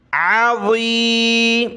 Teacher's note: یہ عین ہے گلے سے نکالا، یہ ضا موٹا کیا